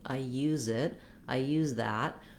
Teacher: when I have another word following, I use it, I use that, we can clearly hear that Z sound.